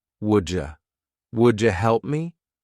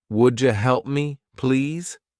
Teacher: would you help me becomes wouldja